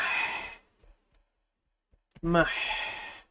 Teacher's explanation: Ha is coming from the middle of the throat.